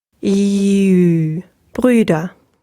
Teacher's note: And therefore, the U moves much further into the front of the mouth. So you can try to pronounce the U sound by starting off with an E again and then rounding your lips. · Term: umlaut